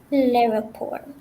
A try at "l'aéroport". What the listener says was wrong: Okay, this one causes problems, but it's a funny word, it's true. But you have to go really per syllable. La, et, ro, port. And that gives you l'aéroport. La, et, so la, et, ro, port. It's 4 syllables, okay? So if you say l'aéroport, it's 3 syllables.